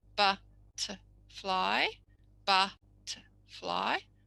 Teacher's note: or butterfly they've just missed the middle one is that where the schwa is ba fly ba fly so